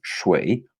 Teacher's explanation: It's sh with the tongue curled back, just like the Mandarin Chinese sh sound. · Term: retroflex sound